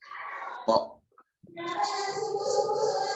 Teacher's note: ketika membaca to, lidah itu berada di gusi yang dua gigi seri. Gusi yang ada dua gigi seri.